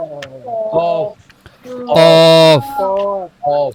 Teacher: জিহ্বার যে গোড়ার অংশ এটা উপরের তালুতে সরাসরি লাগবে। জিহ্বার গোড়া তার বরাবর, অর্থাৎ জিহ্বার গোড়ার বরাবর উপরের তালুর সঙ্গে লাগিয়ে উচ্চারিত হয় কফ।